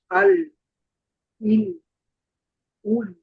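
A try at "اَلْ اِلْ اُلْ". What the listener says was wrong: 8 নাম্বারে হরকত দিয়ে ঠিক আছে, বাকি জজমের সময় যেহেতু এটা রিখোয়ার হরফ, আওয়াজটাকে আরেকটু ধরে রাখার চেষ্টা করা, যেমন আল, ইল, উল। উল মাখরাজে যাওয়ার সাথে সাথে যেন বন্ধ না হয় আওয়াজ, একটু সামান্য সময় রাখতে হবে আর কি।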